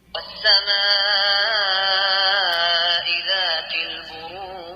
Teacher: ذات البروج في قلقلة عند الجيم.